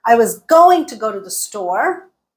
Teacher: going and store got got stressed everything else got reduced